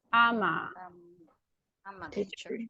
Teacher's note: I'm linking the M sound with the vowel, consonant and vowel.